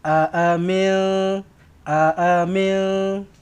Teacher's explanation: Amin, ada dua kali a, dua-dua pendek, dua-dua satu harakat. A yang ini pun satu harakat, a yang ini pun satu harakat.